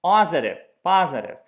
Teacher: the P is not something that we want to voice